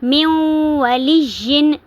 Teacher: من ولیجن، من ولیجن نہیں پڑھیں گے، میم کو واو کے ساتھ ملائیں گے، من ولیجن، میم زیر واو، میم واو، واو زبر وا، میم وا لام زیر یا لیش، میم ولیجا دو زیر ین، میم ولیجن۔